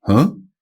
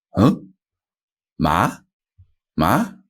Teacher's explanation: so for example huh that's pretty much the second tone huh it's quite quick and it goes from around about your middle range to the highest point in your vocal range